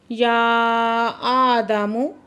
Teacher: या आदमु मद्दे मुफ़स्सिल है, 4 से 5 हरकत खींच के पढ़ेंगे।